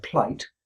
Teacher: He called the one I just described, plight, a close transition, because there's basically no gap between the P and the L, their articulations overlap · The P is still being articulated while the speaker starts to articulate the L. And the result is the 2 get fused together in some way, and you get a word plight, which is just a single syllable.